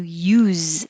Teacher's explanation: use you with an s and the stress sound is oo if it's the action how do you use this it will sound like a z at the end